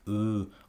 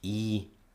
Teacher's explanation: vowels can be rounded like U or unrounded like e